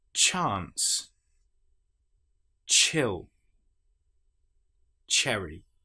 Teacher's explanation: With the ch sound, the nonvoice sound